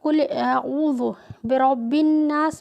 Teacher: یہ جو رو کے اوپر زبر و پیش آتا ہے تو اس رو کو بھی گول پڑھا جاتا ہے